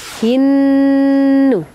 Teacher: Hin alif lam samsiah kemudian disambut dengan ghunah pada huruf nunnya